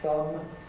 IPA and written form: θʌm (thumb)